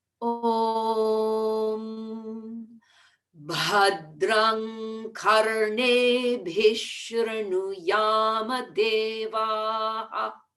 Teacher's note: Bhadram becomes Bhadrang in the throat